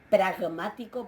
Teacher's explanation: y esa G es esa gutural o velar